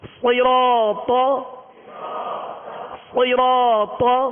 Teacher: صاد میں سیٹی کی آواز ہوگی، صاد کو پر پڑھیں گے، حروف مستعلیہ میں سے ہے، را پر زبر ہے، را کو پر پڑھیں گے. · طا پر زبر ہے، بغیر کھینچے آواز اور منہ کھول کر ادا کریں گے، اور طا کو پر پڑھیں گے، حروف مستعلیہ میں سے ہے. صراط، مگر ہونٹوں کو جنبش نہیں ہوگی، ہونٹ گول نہیں ہوگے